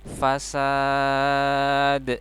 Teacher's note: Dalnya disukunkan, dan dal disukunkan menjadi qalqalah ya. Dia dipantulkan. Fasad. Ada pantulan de-nya ya.